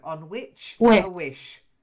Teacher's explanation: you've got to get the hard ch sound on which and the soft sh sound on wish